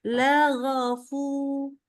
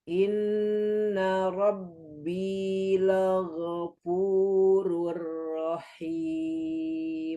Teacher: Jadi go nggak boleh maju. Nah, fu-nya maju. Tapi nggak boleh lago.